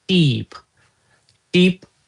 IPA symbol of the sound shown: iː